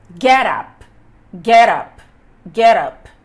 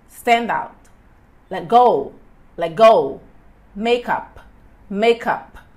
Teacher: Já no caso dos phrasal verbs, que são aqueles verbos que são seguidos por uma partícula e essa partícula pode ser uma preposição ou um advérbio, é o segundo elemento que é enfatizado. Ou seja, a partícula é enfatizada.